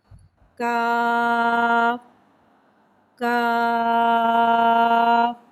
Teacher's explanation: ये बारीक वाला काफ है, लिहाजा से हम बारीक पढ़ेंगे। काफ उर्फ लाहविया है, ज़बान की जड़ और तालों के सख्त हिस्से से अदा होता है।